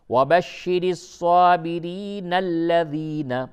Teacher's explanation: نون کو ڈائریکٹ لام سے ملا دیں گے ، تو اس طرح سے پڑھیں گے وَبَشِّرِ الصَّابِرِينَ الَّذِينَ، ٹھیک